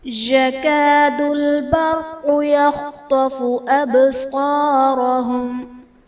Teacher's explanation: يكاد البرق میں را ساکن سے پہلے حرف پر زبر ہے، را کو پر پڑھا جائے گا، قاف حرف مستعلیہ ہے، پر پڑھا جائے گا۔ · ابصارهم میں با حرف قلقلہ ساکن ہے تو یہاں پر قلقلہ کو ظاہر کریں گے۔